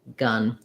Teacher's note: my tongue is pretty central. It's not touching the top or the bottom, and it's fairly flat, fairly relaxed.